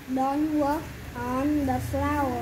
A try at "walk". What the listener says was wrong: No. Don't say work. Đọc đầu work đọc sai mất rồi. Work là làm việc. Con này là đi bộ mà đâu đừng dẫm đạp lên nè. Don't walk on the flowers. Walk.